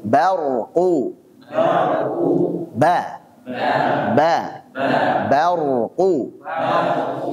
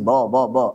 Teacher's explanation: ni di situ tambah Nun [Musik] wiqil W dan huruf ba jadi yang harus dibaca tipis adalah huruf ba Jangan dibaca tebal